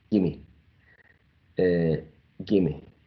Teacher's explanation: The long vowel sound E, right, is shortened